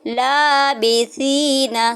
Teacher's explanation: سا جو ہوتا ہے وہ نرمی سے پڑھا جاتا ہے، اس میں سیٹی پیدا نہیں ہوتی۔